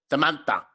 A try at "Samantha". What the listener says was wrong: You don't have to like change your voice. Samantha.